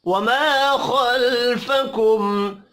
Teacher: میم ساکن کے بعد واو ہے اظہار شفوی ہوگا غنہ نہیں ہوگا